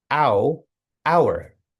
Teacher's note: hour starts with an H, but the H is silent. The first sound is O W, O, ow, hour.